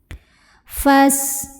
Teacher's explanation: huruf sin punya sifat yang khas, ya. Sifat yang tidak memiliki lawan namanya sofir. Ada desis seperti suara ular.